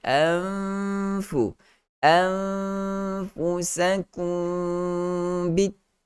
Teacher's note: Mim mati bertemu dengan ba, ada gunnah di situ, dengan kita sebut sebagai hukum ikhfa syafawi.